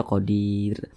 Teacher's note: berwaqaf di huruf Ro Jadi kalau kita berwaakaf P huruf ro huruf ro dibaca tipis dibaca tarkik karena di belakangnya ada huruf Ya Sukun